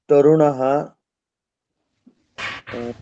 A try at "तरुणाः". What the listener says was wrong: तरुणः न करके तरुणाः, आंखों खींचिए। तरुणाः, ठीक है।